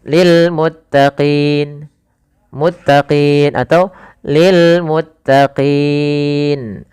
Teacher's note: Maka dalam bacaan mad arid sukun ini kita boleh memanjangkan dua harakat, boleh empat harakat, boleh pula enam harakat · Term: mad arid lukun